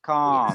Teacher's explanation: You actually don't pronounce the L sound at all.